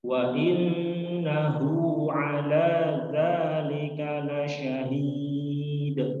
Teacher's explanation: ayat ke-6, ke-7 dan termasuk ke-8 juga kita temukan di akhir dari ayat ini ada huruf dal, yang mana sama seperti ayat sebelumnya, namun ini berada di akhir ayat dan kita wakafkan, kita matikan, maka disebut dengan qalqalah kubra.